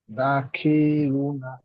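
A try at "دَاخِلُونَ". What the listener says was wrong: খি টানা, খি টান হবে না, খি টান হবে না। দাখিরুনা, দাখিরুনা।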